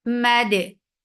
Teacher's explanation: Dal will get sifa of qalqala and both letters are light.